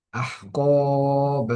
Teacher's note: এখানে এই শব্দটির মধ্যে কফে এক আলিফ টান হবে